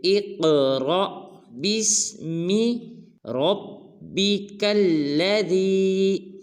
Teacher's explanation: جب حمزہ کو قاف کے ساتھ ملائیں گے، قاف کو قلقلہ کریں گے، را کے بعد جو الف ہے اس کے اوپر ساکن کا نشان ہے، لہٰذا یہ الف نہ ہوا بلکہ حمزہ ہوا، تو ہم اس کا جوڑ کریں گے را حمزہ زبر را، ان کے جھٹکے کے ساتھ پڑھیں گے، جیسے اقرا بسم ربک الذی۔